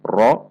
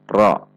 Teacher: tidak dibaca dengan membulatkan bibir, tidak dibaca dengan ra, namun dibaca dengan ra, menegangkan pangkal lidah karena sifat tafkhim. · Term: huruf ra